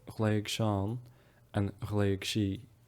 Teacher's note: And again, cianich, not lenited, and the DH is pronounced as a CH here. Something noteworthy with these one-syllable IGH verbs is that the IGH is actually pronounced as a G even before pronouns.